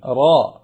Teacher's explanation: പറയുമ്പോൾ ചുണ്ടിന്റെ ഒരു ആകൃതി ശ്രദ്ധിക്കുക അതുപോലെ ഒരു സ്വഭാവം റാഹ് പറയുമ്പോൾ വരില്ല റ ചുണ്ട് ഇളകുന്നതല്ല നാവുകൊണ്ട് പറയേണ്ട അക്ഷരമാണ്